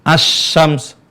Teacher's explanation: pertemuan dua huruf kemudian huruf pertama dileburkan ke huruf Shin melebur sehingga dia nggak nampak sama sekali jadi hilang suaranya secara suara tapi secara tulisan gak boleh dihilangkan dalam penulisan Alquran · Dalam penulisan Al-Quran nggak boleh dihilangkan. Hanya suara, ya, suara lam itu hilang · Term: Al idgham, idgham